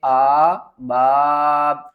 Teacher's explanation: با الف مد زبر با، 5 الف کی مقدار کھینچ کر پڑھیں گے